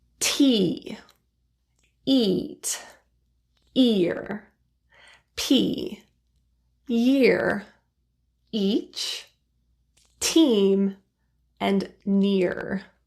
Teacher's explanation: The middle of the tongue is very high and close to the palate or the roof of the mouth. And the lips are spread into a smile position.